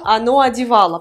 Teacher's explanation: O sans accent tonique se prononce A.